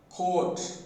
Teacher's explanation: When we produce this phoneme, the lips are fully rounded and open.